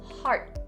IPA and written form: hɑːrt (heart)